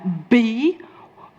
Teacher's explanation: By is two, labial is a lip. So I'm using two lips. That's the place of articulation to create a B. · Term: bilabial sound